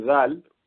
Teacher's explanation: اسی طریقے سے زال بولنا ہے آپ کو، زال، یہ دیکھیے زبان فوراً زال کے لیے بند نہیں ہوئی آواز، زبان کا کنارہ آگے دانتوں کے کنارے میں لگا ہے، تو آواز جاری رہی. سانس نہیں آ رہی لیکن آواز تو آ رہی ہے، زال کے بعد. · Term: رخوہ